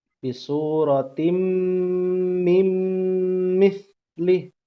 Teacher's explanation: Jadi nunnya sudah hilang tuh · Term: Idgham biguna